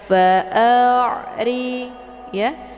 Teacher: ain ini dialirkan dan bacaannya adalah lunak. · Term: ain sukun